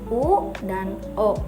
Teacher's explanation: vokal diucapkan dengan bentuk bibir bulat. Bentuk bibir bulat bisa terbuka atau tertutup. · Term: vokal bulat